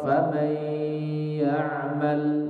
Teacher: disertai dengan dengung, yaitu apa? Sautun yakhruju minal khaisum, suara yang keluar dari rongga hidung. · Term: idgham bi gunnah